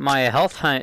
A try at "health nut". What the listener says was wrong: You mean health nut? You didn't say nut, you said hut.